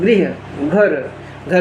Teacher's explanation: महाप्राणीकरण में अंदर से हवा ज़्यादा निकलती है, ज़्यादा प्राण लगते हैं।